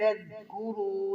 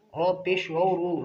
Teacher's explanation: لذکروا، رو پیش و رو، را کو موٹا بھی کریں گے، اسے ایک الف کے برابر کھینچیں گے کیونکہ حروف مدہ ہے تو اس وجہ سے حروف مدہ ایک الف کے برابر کھینچے جاتے ہیں۔